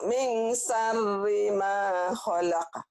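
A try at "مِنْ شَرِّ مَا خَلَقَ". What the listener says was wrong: Iya, tapi shinnya gede. Min syar. Shin. Min syarri ma.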